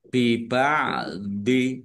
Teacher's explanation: Mim sukun ya, bertemu dengan huruf ba, bacaan ikhfa safawi dibaca samar-samar.